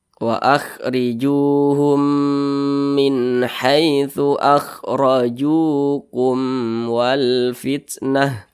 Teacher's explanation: Berarti ini hukumnya izhar syafawi, dibaca jelas. Jadi dibaca pendek saja, jangan didengungkan.